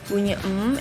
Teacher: ini adalah bunyi melibatkan dua bibir atas dan bawah atau bilabial dan bunyi yang melibatkan rongga hidung atau nasal